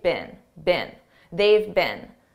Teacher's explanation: Now notice I said been, a very unstressed been. This is how we pronounce the past participle of the verb be, been, in American English.